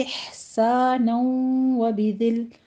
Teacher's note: ہا پر حمز کریں گے، وسط حلق میں لے جا کے اس کو سٹاپ کرنا ہے